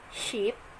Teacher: Long vowel, for example, vowel I with non-capital letter, in producing the vowel such as in sheep, the fronted tongue body raised toward the palate.